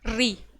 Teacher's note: हमारी जो जीभ है उसका आगे का हिस्सा उलट कर झटके से नीचे आ जाता है, तो उसको क्या कहा जाता है, मूर्धन्य या मूर्धा स्वर। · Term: मूर्धन्य स्वर